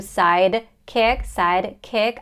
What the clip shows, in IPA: ˈsaɪd.kɪk